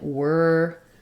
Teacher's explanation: this is the r sound it's a stressed vowel vocalic R